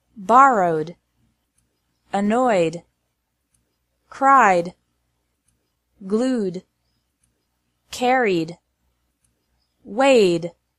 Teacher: ED is pronounced like D after verbs ending in a vowel sound.